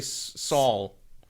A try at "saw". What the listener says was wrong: Yeah. Saw. There's no L in that word. You say Saul or Saul. But you have an L sort of sound coming out.